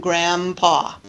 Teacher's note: bilabial consonant and so is M that makes it very easy all I need to do is close my lips and I pronounce both M and P at the same time